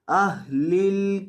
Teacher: اہلل ہا کو حلق کے آخری حصے سے جو سینے کے ساتھ متصل ہے وہاں سے ادا کیا جاتا ہے